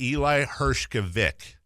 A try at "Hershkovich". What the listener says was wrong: Hershkovich. So you got to have the H in there, but it was close enough, man. You were nearly spot on.